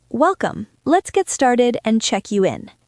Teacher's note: There is a pause after welcome, so the sentence has 2 thought groups